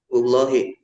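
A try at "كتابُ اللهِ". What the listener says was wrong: Kasrah atau dhammah? Itu samar ucapnya. Kasrah atau dhammah? Dengan kasrah ya. Kitabullahi.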